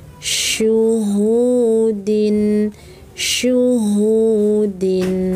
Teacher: Syu, tengah-tengah lidah angkat naik ya